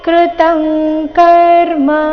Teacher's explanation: ಅನುಸ್ವಾರದ ಉಚ್ಚಾರಣೆ ಇಲ್ಲಿ ಕ ವರ್ಗದ ಅನುನಾಸಿಕ ಗ ರೀತಿ ಬಂದಿದೆ ಯಾಕಂದ್ರೆ ಅನುಸ್ವಾರದ ನಂತರದ ಶಬ್ದ ಕ ದಿಂದ ಪ್ರಾರಂಭ ಆಗ್ತಾ ಇದೆ ಕೃತಂ ಕರ್ಮ